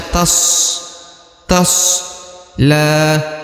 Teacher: Huruf la, perhatikan ini dibaca dua harokat ya, karena di atasnya terdapat alif kecil, maka dibaca tas la ya.